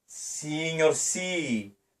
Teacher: So the E vowel is longer as opposed to signor si. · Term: long vowel